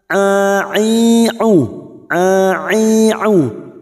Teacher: Huruf ain jangan samakan dengan hamzah. Huruf ain memiliki sifat tawasud dan jahar. Bagian tengah tenggorokan lebih menyempit daripada ketika mengucapkan huruf ha.